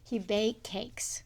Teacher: one of the features of AAE is that, third person S is not pronounced.